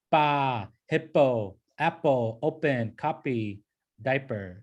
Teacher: You just pronounce it like that letter, pa. But it's not a hard P, it's not a hard P sound. Like it's not a pa. There's no like puffy sound. It's not pa, but it's pa, okay?